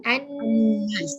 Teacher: Kita tinggalkan lam ini, kita masuk alif hamzah wasal kepada nun. · Bukan dengung di telinga. Ini dengung di mana? Dengung pangkal hidung. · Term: idgham samsiah, wajib dengung